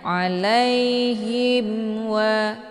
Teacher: cukup ditekan saja tidak perlu ditahan jangan sampai terbunyi bacaan tahan hukum bacaan izhar syafawi dibacanya jelas tiada berdengung Jadi dibacanya alaiim wa bukan alaiim itu bacaan yang salah karena